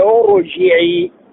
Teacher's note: يفخم حرف الراء بعد همزة الوصل تفخيم مطلقا